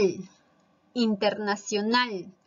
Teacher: es una palabra grave internacional e internacional es una palabra aguda lleva la mayor fuerza de voz en la última